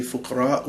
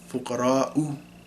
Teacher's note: So there's an epiglottal stop there before the next vowel.